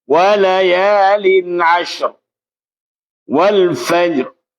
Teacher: kalau wakafnya wakaf sakan ini rnya ditebalkan